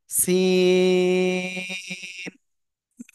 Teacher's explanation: জিহ্বার আগা সামনের নিচের দুই দাঁতের পেট ও আগার সাথে লাগাবেন